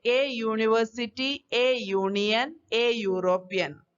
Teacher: though the words university, union and European starts with the vowel letters, these letters have a consonant sound Y. Hence, the article A is used.